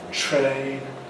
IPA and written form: treɪn (train)